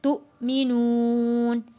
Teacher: हमज़ा के ऊपर जज़म है, हमज़ा को हम झटका दे के हमने पढ़ना है।